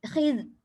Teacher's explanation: Masalahnya kita membaca zal dengan qalqalah, itu masalah dia. Dia tak ada apa-apa dan dia tidak boleh qalqalah, tapi kha pula kena kuat sikit. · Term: zal tak boleh qalqalah